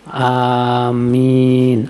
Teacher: Pengucapan amin yang benar adalah amin. A-nya 2 harokat. Minnya itu bisa sampai 6 harokat. Karena A itu mad asli.